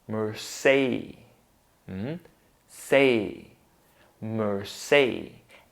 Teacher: Then the stressed syllable is say